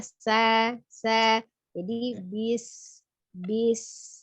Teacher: Suara desis itu dengan tidak merubah makhraj ya, makhrajnya huruf sin itu ujung lidahnya ada di antara ya. Ujung lidahnya ada di antara ujung gigi seri atas dan bawah, jadi tidak menyentuh ya. Nah, jadi sin ya, sa.